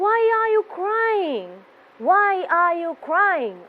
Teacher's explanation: Our voice will be going down towards the end of the question. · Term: falling voice